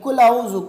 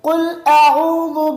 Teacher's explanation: قاف کو کاف پڑھتے ہیں اور عین کو حمزے کے ساتھ پڑھتے ہیں کل اعوذ، کل اعوذ نہیں ہے بلکہ قل اعوذ برب الناس